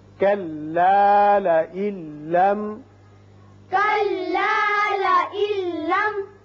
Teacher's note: لام ہے لہذا یہاں ادغام بغیر غنہ ہوگا اور میم پر اظہار ہوگا